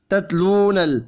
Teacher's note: تا ساکن پر قلقلہ نہیں کرنا ، واو مدہ کو ایک الف کے برابر کھینچ کر پڑھیں